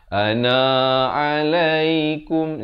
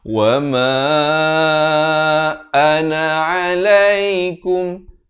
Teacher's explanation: Na ni jangan panjang walaupun ada alif. Ini sebenarnya huruf zaidah saja.